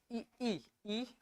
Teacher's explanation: जीभ का आगे वाला भाग फैल के इ और ए ए बोलने में मदद कर रहा है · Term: अग्र स्वर